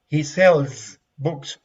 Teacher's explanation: Remember that the final S here is pronounced like a Z, like a mosquito flying. Z, okay, like a Z, okay, like a buzz.